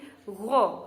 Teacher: huruf ghain ini tempat makhrajnya yaitu ada di puncak tenggorokan. Jadi tidak mendengkur, lidah tidak bergerak dan jangan seperti g atau nggo, jangan seperti itu.